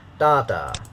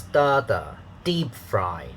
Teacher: two syllables the first syllable is stressed uh it has a higher pitch so da and then second syllable is unstressed so it has